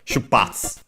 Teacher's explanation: when I or U are at the end of a word, and in this case even the sentence, and are preceded by an unvoiced consonant, they're barely heard, if at all.